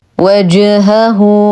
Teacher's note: نقلقل الجيم قلقلة صغرى فهي من حروف قطب جد حال سكونها. وجهه، نتم ضمة الهاء ونصلها بواو مدية بمقدار حركتين صلة صغرى.